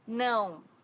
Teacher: no has a very unique sound in Portuguese because it's a nasal sound